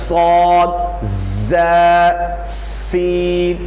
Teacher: تو ان حروف کو ادا کرتے وقت سیٹی کی طرح تیز آواز ان کے مخرج سے نکلتی ہے۔ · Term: حروف صفیریہ